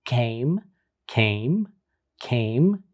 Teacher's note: you will look at the initial sound and write the phoneme and the description which is a voiceless velar stop